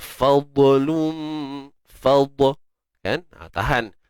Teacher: Huruf dad kalau dia sukun, jangan kita sesekali lantunkan dia. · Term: huruf dad mati